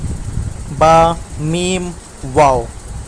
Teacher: با بند ہونٹوں کے گیلے حصے سے، میم بند ہونٹوں کے خشک حصے سے، پھر واو ہونٹوں کو گول کرنے سے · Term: حروف شفویہ